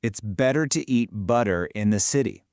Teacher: All those T's just melt into D's and the whole thing just flows together beautifully. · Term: flap t